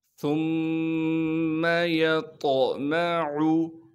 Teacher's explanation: یا کو طا سے ملائیں گے کیونکہ طا ساکن ہے اور طا موٹے حروف میں سے ہونے کی وجہ سے طا میں قلقلہ بھی کریں گے اور طا کو موٹا کر کے بھی پڑھیں گے۔